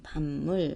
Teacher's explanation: 밥, 물이 만나서 소리는 밤, 미음으로 바뀌지.